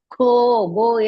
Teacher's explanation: ಘೋ ಇಸ್ ಮಹಾಪ್ರಾಣ ಅಂಡ್ ದೀರ್ಘ